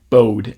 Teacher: it's not like a really dramatic diphthong in this context for the speaker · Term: oh vowel